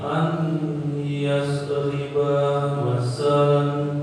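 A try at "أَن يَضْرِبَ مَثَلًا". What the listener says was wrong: Jangan dibaca an, karena sudah belajar gitu kan. Ayyadriba masalan. Jangan dibaca an, langsung dimasukkan hurufnya kepada nun mati itu kepada ya. Itu idgham.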